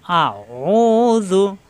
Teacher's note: ও কণ্ঠনালীতে চাপ দিয়ে আইন